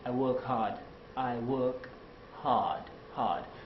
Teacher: the british will say i work hard i work hard hard so you can't really hear the r